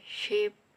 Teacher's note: voiceless palato-alveolar fricative sound sha